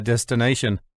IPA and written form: ˌdɛstɪˈneɪʃən (destination)